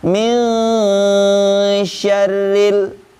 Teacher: Jadi lisan kita atau mulut kita ketika mengucapkan nun telah membentuk huruf shin, ya, seperti itu, atau menyerupai huruf shin, yaitu huruf setelah nun sukun atau tanda tanwin, seperti itu ya.